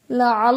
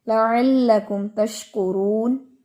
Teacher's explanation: یہ لام بریک ہے، اس میں آپ موٹا نہیں کریں گے، زبان نہیں اٹھائیں گے